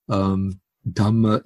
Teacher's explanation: in Pali, the R will generally be assimilated to the following consonant. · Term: assimilation of the R